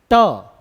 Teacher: जीभ ने जिसको टच किया उसे ही हम क्या कहते हैं? मूर्धा।